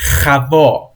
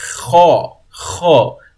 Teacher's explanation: We kind of ignore the V at the middle. Like it doesn't exist.